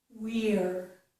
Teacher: I have to round for the W, but I'm going to spread my lips for the rest of the word. We're. Again, that's the stressed version.